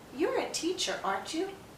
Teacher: When we're confirming, we're asking a real yes-no question, so our voice tends to go up. The pattern is to have rising intonation.